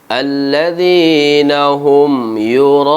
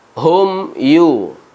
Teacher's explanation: Mim mati bertemu dengan huruf ya, izhar syafawi, ada huruf mim. Dikategorikan sebagai huruf al-ghunnah, namun ghunnah yang lemah.